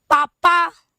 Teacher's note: प बोलिए, पवर्ग, तो सीधे आपके होठ मिलते हैं। उ करते हैं तब भी आपके होठ कहीं ना कहीं पूरा रिस्पॉन्स करते हैं।